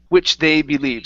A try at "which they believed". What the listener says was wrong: you added an extra sound saying which are they? Okay, so combine these sounds together.